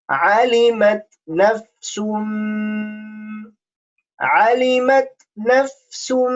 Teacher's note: You notice I'm pressing nafsum because it's a hunna. It's a nasal sound we have to make over there